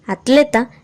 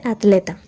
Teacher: También hay una tendencia a crear diptongos cuando e y o aparecen ante otra vocal, teatro en lugar de teatro, y a pronunciar tl dentro de la misma sílaba